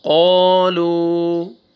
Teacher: قا فتحہ الف، قا، لام ضمہ واو سکون، دیکھیں قاف کو بھی کھینچنا ہے اور لام کو بھی، الف سے پہلے فتحہ، واو سکون سے پہلے ضمہ، سکون کے بعد الف نہیں پڑھیں گے، لام ضمہ واو سکون، لو، قالو۔